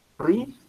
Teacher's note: Es una palabra grave porque el acento está acá en la I